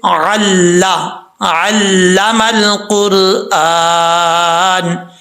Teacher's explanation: عین جو ہے اس کو اپنے مخرج سے ادا کرنا ہے، حمزہ کی آواز نہیں آنی چاہیے